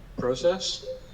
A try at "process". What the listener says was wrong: Wrong. The stress is wrong.